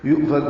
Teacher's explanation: حمزہ ساکن جھٹکے سے پڑھا جائے گا